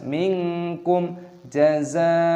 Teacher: Mad wajib muttasil, diperpanjang hingga enam ketukan.